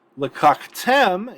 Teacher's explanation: Lakaktem is accented on the final syllable because it's actually closed, and so it brings the accent mark all the way down with it, which means this first kametz has to reduce.